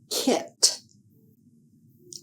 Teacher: To make the sound of the letter K k air is blocked by the back of the tongue against the roof of the mouth. Air is exploded through the mouth as the sound is made. K is an unvoiced sound. Keyword is kit.